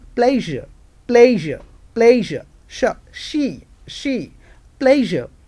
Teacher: the passage is not closed completely and that's why there is a gap between these two articulators hard palate and tongue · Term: fricative